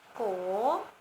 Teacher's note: Dapat dilihat dengan contoh konsonan kokai ditambah vokal O dibaca ko, dengan nada bangkit